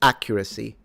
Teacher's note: accuracy is stressed at the beginning